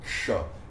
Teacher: Ele é o K com o Sh cerebral. Não é Ksha, não é Ksa.